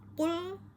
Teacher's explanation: Qul di sini itu ada pada pangkal lidah yang lunak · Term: qaf